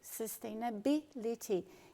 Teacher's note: No caso de sustainability, você vai intensificar bill